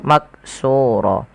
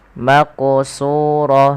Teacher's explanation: huruf qaf ini wajib dipantulkan ketika dia berharakat sukun maqsur kesalahan yang terjadi di dalam membaca Qalqalah yaitu tidak memantulkan